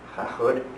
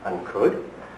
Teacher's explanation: notice it's aspirated. H going in there.